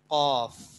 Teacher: زبان کی جڑ اور کوا جب آپس میں مل جائے تو قاف ادا ہوتا ہے